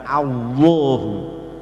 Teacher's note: Jadi caranya lidah nempel di atas gusi, suaranya ditebalkan. Allahu. Dan la selalu dibaca tipis, tidak ada selain lafal Allah.